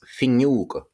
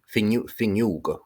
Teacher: when you have O fadó next to a nasal consonant, so M or MH, N or NN or NG, the O fadó gets raised to U · So he says finneoga. And notice that the NN becomes an NG as well. Finneoga, which is quite different from probably what's mistaught in schools.